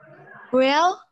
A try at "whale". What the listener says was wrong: See? whale, not well. Not well. Well is baik-baik saja. Or sumur.